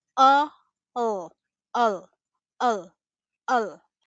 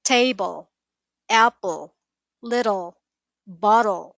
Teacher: It's the sound you hear in endings like -le, -el, -al in some cases. Instead of clearly pronouncing a full vowel, English reduces it to a soft uh or the schwa uh, and then flows into a dark L.